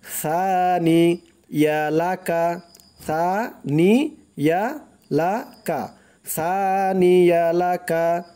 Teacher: টান দিতে হবে, সার উচ্চারণটা একদম নরম করতে হবে, জিহ্বার মাথা উপরের দাঁতের মাথার সাথে লাগবে